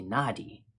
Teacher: i don't always say not t but i sometimes say nadi i speed it up and i replace the t with the d sound that makes it sound more like american english